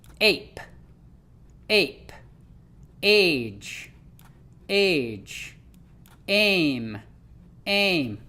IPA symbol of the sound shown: ae